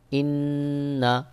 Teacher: ইন নুন জবর না ইন্না এখানে দেখুন নুনের উপরে তাসদিদ রয়েছে নুনে তাশদিদ থাকার কারণে এখানে গুন্নাহ করতে হবে